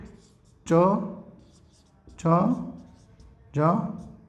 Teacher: च वर्ग के पांचों वर्ण का उच्चारण तालु से